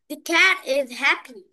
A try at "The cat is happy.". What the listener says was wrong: এখানে দি না, এটা বলো দ্য ক্যাট ইজ হ্যাপি।